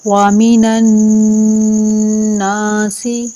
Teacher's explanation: نون مشدد پر ہمیشہ ایک الف کے برابر رک کر غنہ کیا جاتا ہے۔ ایک الفی مدار یعنی ایک مٹھی کو کھولنے یا بند کرنے میں جتنا ٹائم لگتا ہے، اور یہ غننے کی آواز ناک سے آتی ہے۔